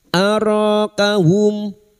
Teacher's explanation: mim sukun bertemu kaf idhar safawi, mim sukun dibaca jelas tanpa mendengung